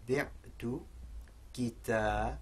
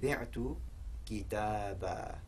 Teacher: if we have a fathat tanween and we have an alif after it, it's not that we treat it as a sukoon, rather we treat it as a long fatha vowel. So we read it ba, bi'tu kitaba, which actually means I sold a book.